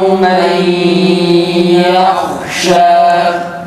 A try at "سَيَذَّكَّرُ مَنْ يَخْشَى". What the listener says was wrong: Ha'da fethalıdaki gibi A sesi ses tonuyla çıksın. Yah değil, yah ağzımızı açıyoruz. Yahşe, yah değil, yahşe ağzımızı açıyoruz. Fethalı Ha'daki gibi A sesi ses tonunun çıkması gerekir.